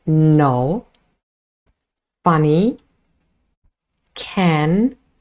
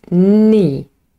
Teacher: the tip of the tongue touches just behind our teeth. So just behind your teeth. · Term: nasal